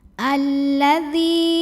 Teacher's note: Karena alif lam ta'rif ketemu sama huruf syamsiyah yaitu lam. Maka cara bacanya diidghamkan atau dimasukkan ke lam kedua. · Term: alif lam syamsiyah